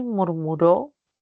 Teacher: Última sílaba es la que tiene la mayor fuerza de voz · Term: aguda, palabra aguda